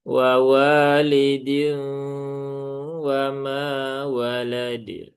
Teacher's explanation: Jangan sampai bertambah huruf hamzah di setelah huruf dal yang sukun ya karena memang tidak ada hamzahnya. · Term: qalqalah kubro